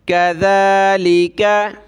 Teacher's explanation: दाल पे ज़बान निकालें